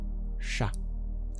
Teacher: That's the retroflex sibilant, where you curl your tongue back to pronounce it.